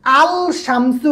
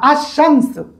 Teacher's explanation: যেটা শুরুতে আলিফ লাম আসলে লামের উচ্চারণ হয় না।